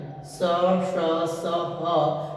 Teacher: नीचे जो आपके ऊष्म व्यंजन है स, श, स, ह, ये भी महाप्राण व्यंजन है